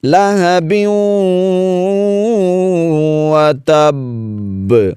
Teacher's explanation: با پر شد ہے، جماؤ کے ساتھ ادا کریں گے، اور پھر آپ وقف کر رہے ہیں تو قلقلہ بھی ضرور کریں گے۔